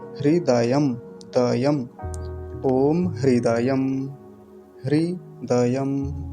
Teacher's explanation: और यहाँ भी एक गलती होती है, हृदयम, द्यम बोल देते हैं, द्यम यानी द को आधा, य को पूरा करके बोलते हैं। तो दोनों पूरे हैं वर्ण, द भी पूरा है, य भी, दकार भी पूरा, यकार भी पूरा है